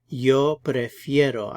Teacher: That E becomes a diphthong, so it's an IE.